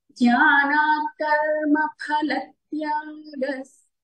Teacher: ధ్యాన ఒత్తు ధాన్ని మహాప్రాణి గట్టిగా ఒత్తి పలకాలి. ధ్యాన నా కూడా దీర్ఘమేనండి.